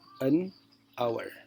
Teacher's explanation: Ya, meskipun diawali dengan H, kalau penulisan ini sudah benar ya, a hour misalnya ya. Tapi karena H-nya tidak dibaca, maka di sini harusnya an hour.